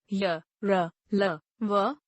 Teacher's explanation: जिन व्यंजनों का उच्चारण स्वर और व्यंजन के बीच में होता है, उन्हें अंतःस्थ व्यंजन कहते हैं। ऐसे व्यंजनों के उच्चारण के समय जीभ मुख के किसी भी भाग को पूरी तरह स्पर्श नहीं कर पाती।